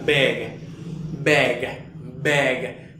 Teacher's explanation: si tomas tu garganta vas a sentir esa vibración al pronunciar esa g al final